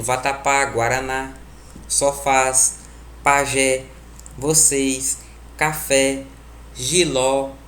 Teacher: Oxítonas são o quê? Aquelas que a tonalidade, a última sílaba, é a mais forte.